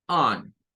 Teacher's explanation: Luego llegamos a on. Esa es esa O que suena como una O mezclada con A